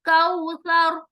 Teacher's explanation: جب ہم آیت کو وقف کر رہے ہیں تو اس وقف کرتے ہوئے یعنی سٹاپ کرتے ہوئے یہ را جو ہے اس کے اوپر جو زبر ہے وہ سکون میں بدل جائے گا, جزم میں بدل جائے گا. تو را سکون کا فائدہ بھی یہ ہے کہ جب ہم اس کو پڑھیں گے تو ہم اس کو موٹا کر کے پڑھیں گے